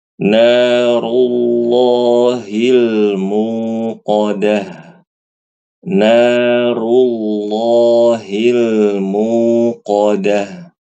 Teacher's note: huruf ro berharakat dhamah itu dibaca tebal dalam keadaan apapun